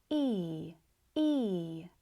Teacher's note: The difference with this sound is that it starts off intense, but then gradually fades away. E E You also might notice it's slightly deeper and not as light as the short E and the long E. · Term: happy e